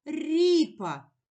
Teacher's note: Ми чуємо перший звук р він м'який ми його позначили двома рисочками ви визначимо місце звука р у